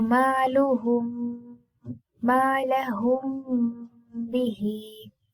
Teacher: Okay, and there the ikhfa will be like that we will not completely close the lips, but there will be a little gap between the lips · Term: ikhfa shafawi